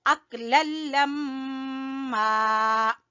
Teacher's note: मीम मुशद्दद का गुन्ना पहले करेंगे फिर अलिफ मद्दा को खींचेंगे